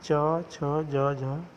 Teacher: इन व्यंजनों के उच्चारण में वायु पहले किसी मुख अवयव से स्पर्श करती है, फिर रगड़ खाते हुए बाहर निकलती है। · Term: स्पर्श संघर्षी व्यंजन